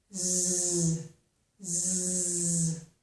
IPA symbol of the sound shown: z